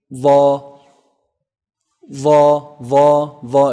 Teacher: It's actually the tip of the tongue and the edge of the upper incisors. The. It's a heavy letter.